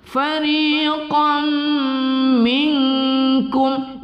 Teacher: nun sukun bertemu kaf kita baca ikhfa hakiki